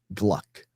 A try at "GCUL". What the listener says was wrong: It's GCUL. GCUL. The G and L are not next to each other.